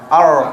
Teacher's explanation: Ra tebal lidah kita belakang. R. Ingat bila ra tebal tu maksud saya mulut tak perlu moncong dan jangan senyum.